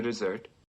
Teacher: don't forget that dessert has the stress on the second syllable